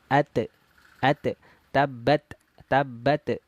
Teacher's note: ketika huruf tnya berharakat sukun dia yang keluar itu nafas bukan suara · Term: sifat Hamas